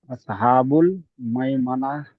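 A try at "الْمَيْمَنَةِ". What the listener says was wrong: তি তি বলবেন না। এখানে যখন আপনি যখন আয়াতটি পড়ছেন তখন এটাকে ওয়াকফ করার সময় আপনি এটাকে হা বলে দেবেন, মাইমানা।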